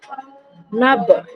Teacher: না বলুয়া, নুন বা জবর নাব, এখানেও বা হচ্ছে কলকলার অক্ষর, বা এর উপর সাকিন রয়েছে তাই এটা কলকলার অক্ষর। এমন ভাবে পড়তে হবে এখানে যেন মাখরাজে ধাক্কা লেগে আলাদা হয়ে যায়, অর্থাৎ কলকলা করে পড়তে হবে